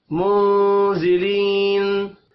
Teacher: منزلین نون ساکن کے بعد زا ہے، اخفاء حقیقی ہوگا، ذلی یا مدہ ہے، ایک الف کے برابر کھینچ کر پڑھیں گے، وف کی صورت میں نون ساکن پڑھا جائے گا۔